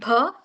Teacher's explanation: And next B which is bilabial closive. You use two lips to pronounce this word B